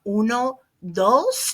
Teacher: Notice my dos is nice and soft. I'm not doing a hard D. I'm doing more like a TH-ish sound.